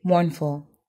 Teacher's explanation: the word stress is on the first syllable